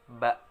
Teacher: bertemunya antara bibir atas dan bawah dengan sedikit menekan, keluar darinya huruf ba.